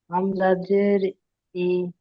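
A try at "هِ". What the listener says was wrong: হাজের হিটা ছেড়ে যাচ্ছে।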